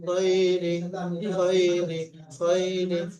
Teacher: লিহুব্বিল খায়র, ইয়া সাকিন ডান দিকে যাবার খায়ের উপরে ইয়ালিন, ইয়ালিনকে নরম আওয়াজে তাড়াতাড়ি পড়তে হবে, টান দেওয়া নিষেধ